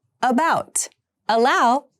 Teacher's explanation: uh is a central vowel and so is pronounced in the central part of your mouth